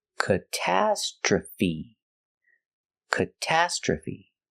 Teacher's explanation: like cut and up katastra and the last sound is feet stress is on the second and fourth syllable